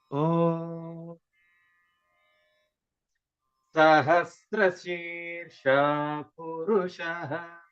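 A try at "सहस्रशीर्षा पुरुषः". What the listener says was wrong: What happened? You don't have scale.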